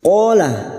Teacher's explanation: Qala fathah diikuti alif, dua harakat kita panjangkan mad tabi'i. Qala i, huruf ain jangan samakan dengan hamzah, huruf ain yang memiliki sifat tawassut dan jahar.